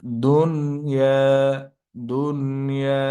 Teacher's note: ইজহার অর্থাৎ স্পষ্ট গুন্না ছাড়া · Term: ইজহারে মোতালাক